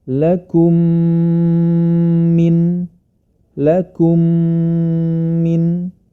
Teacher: mim sukun bertemu dengan huruf mim yang bertasdid ya maka cara membacanya adalah dimasukkan ke dalam huruf berikutnya dan disertai dengan dengung ya karena mim bertemu dengan mim yang disebut dengan Idgham Mimi